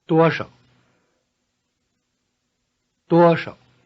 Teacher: The word 少, few, loses its tone in combination.